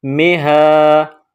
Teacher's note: ہا پر کڑا زبر ہے، تھوڑا کھینچ کر پڑھیں گے۔